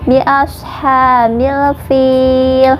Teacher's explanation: Fil ini dibaca panjang 2, 4 atau 6 harokat, terserah ya, asal konsisten dari awal sampai akhir. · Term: mad arid li sukun